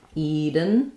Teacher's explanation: Eden actually is stressed on the first syllable, so letter E does say E.